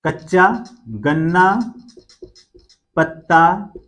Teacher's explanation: जब द्वित्व कोई ध्वनि दो बार आती है, दो बार प्रयुक्त हो जाती है, तो उसके पहले वाला जो स्वर होता है अगर वो दीर्घ है तो फिर वो क्या हो जाएगा? ह्रस्व हो जाएगा। अगर ह्रस्व है तो ह्रस्व ही रहेगा। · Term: द्वित्व का नियम